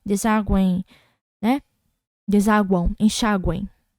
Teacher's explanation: o M, ele tem o som nasal. O som sai pelo nariz e pela boca. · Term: tritongo nasal